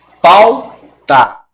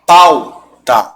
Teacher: O A engole o som do U. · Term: ditongo